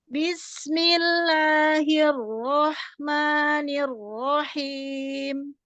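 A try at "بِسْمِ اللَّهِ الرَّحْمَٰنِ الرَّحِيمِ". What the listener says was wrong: Ringankan lamnya. Bismillahi.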